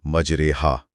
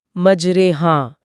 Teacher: را کے اوپر جو کھڑا زبر ہے اسے سیدھا را پڑھنے کے بجائے اس کی آواز کو یا کی طرف جھکایا جاتا ہے، یعنی مجرے ہا۔